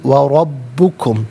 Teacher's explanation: रा पर ज़बर, रा को पुर करके पढ़ेंगे, बा मुशद्दद, जमाओं के साथ पढ़ेंगे